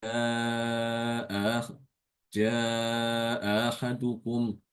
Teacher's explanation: Hamzah pertama tetap dibaca seperti biasa, seperti hafaz. Tapi yang kedua itu ditasilkan.